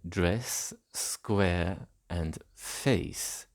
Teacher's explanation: Dress, square, and the onset of face merge into the same e sound